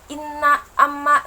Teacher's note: Berikutnya ada inna yang dihukumi dengan gunnah. artinya dibaca dengan berdengung. Hukum gunna ini berlaku untuk huruf nun dan mim yang bertasydid, kayak inna, amma, seperti itu.